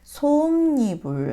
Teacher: 자, 솜니불은, 솜이 일단 장음으로 나나 보네요. 솜니불 하면서 니은이 첨가되고 있죠. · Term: 니은 첨가